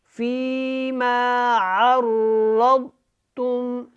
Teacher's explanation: یہاں پہ را کو موٹا پڑھنا ہے، ضاد کو بھی موٹا پڑھنا ہے، اور اس کے اوپر جو ہے وہ قلقلہ کی آواز نہیں آنی چاہیے۔